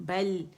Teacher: بل باریک ہے، لام بھی باریک ہے، لام میں توسط ہے، آواز تھوڑی سی چلے گی